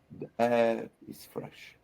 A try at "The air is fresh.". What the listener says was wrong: Yes, that's very good.